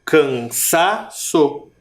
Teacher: Quase não dá para perceber, mas é o sa. Cansaço. A minha boca parece que abre um pouquinho mais, na verdade. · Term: sílaba mais forte